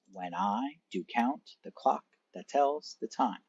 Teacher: one unstressed syllable followed by one stressed syllable